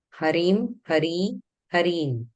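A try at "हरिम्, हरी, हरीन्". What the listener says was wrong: Harim, Hari, Hareen. Where the ikara is, you should watch. Hareen.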